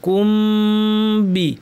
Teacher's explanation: মিম সাকিন পর বা আসলে মিমের গুণাটা লম্বা করে দিবেন